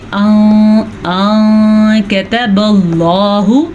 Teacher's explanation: اللہ کا نام ہم پر پڑھیں گے کیونکہ اللہ کے نام سے پہلے حرف پہ زبر ہے۔ جب اللہ کے نام سے پہلے حرف پہ زبر ہو یا اللہ کے نام سے پہلے حرف پہ پیش ہو تو اللہ کا نام پر پڑھا جاتا ہے۔